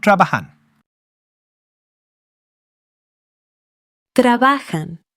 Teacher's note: And enjoy that J. It's a breathy H sound